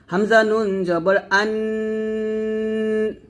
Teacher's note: জিহ্বার আগা উপরে তাল সঙ্গে লাগিয়ে যখন নুনের গুন্নাটা করি তো জিহ্বার আগাটা উপরের তলাতে লাগিয়ে ধরে রাখবেন তারপরে এক আলিফ পরিমাণ টান দিবেন